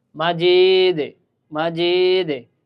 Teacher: মাজিদে তাহলে কি হল এই জায়গায় দালটা দুইবার উচ্চারণ হলো। তা কলকলা হরফের কাজ হয়েছে মানে কম্পন সৃষ্টি করা বা ডাবল উচ্চারণ